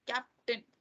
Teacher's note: उसमें कैप जो है वो स्ट्रेस्ड है